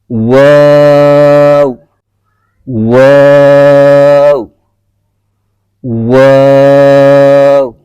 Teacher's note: दोनों होठों को गोल करके एक हर्फ अदा किया जाता है · اس سے اگلا جو مخرج ہے وہ دونوں ہونٹوں کو گول کر کے ادا کیا جاتا ہے دونوں ہونٹوں کی گولائی سے. دونوں ہونٹوں کو گول کر کے ایک حرف ادا کیا جاتا ہے